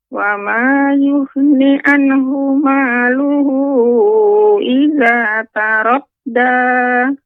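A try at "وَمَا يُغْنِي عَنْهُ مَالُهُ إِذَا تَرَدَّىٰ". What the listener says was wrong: Yughni, ini ada mat Nek. 2 harokat. Tadi Nek bacanya lebih cepat. Yughni anhu. Jadi kurang panjang. Yughni, ya ditekan.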